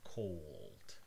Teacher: If you pronounce it very slowly, you'll see that the tip of your tongue is not moving towards your alveolar ridge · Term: dark L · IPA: [kʰoʊɫd]